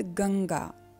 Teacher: गंगा शब्द में जो यह बिंदु है वह हाफ ङ है